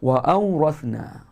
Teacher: Huruf hamzah pangkal halkum tahan suara.